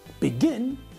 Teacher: to double the last letter before we add the ing ending begin with the stress on the last syllable becomes beginning with three ends two in the middle and one